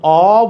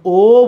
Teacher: আমি যখন অ বলছি মুখ বড় হয়ে যাচ্ছে, কিন্তু যখন ও বলছি মুখ ছোট হয়ে যাচ্ছে। তাহলে অ হইলে বিবৃত, ও হইলে ছোট, সংবৃত।